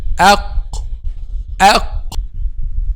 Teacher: The back of the tongue touches what lies opposite, which is what? Aq. Aq. Which is the soft palate. Aq. The roof of the mouth, the part of soft palate. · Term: letter Qaf